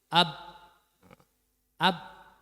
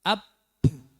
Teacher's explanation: dengan ketika sifatnya itu Hamas yang harus dikeluarkan nafasnya ya jadi ketika membaca ba itu yang penting bibirnya rapat ya kemudian dilepas tapi anginnya jangan keluar jadi ab ab tapi ditekan AB kemudian dilepas ab ab tapi